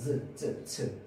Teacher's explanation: 한 번은 공기가 나오는 걸 막아주는데 열 때 살짝만 열어주면서 이 사이로 공기를 마찰시킵니다.